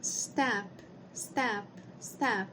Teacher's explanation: se você colocar a mão aqui no no seu pescoço você vai sentir que não tem vibração